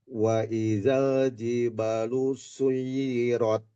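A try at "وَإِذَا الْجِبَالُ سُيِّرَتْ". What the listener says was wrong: Baknya kurang panjang. Wa idzal jibalu suyirat.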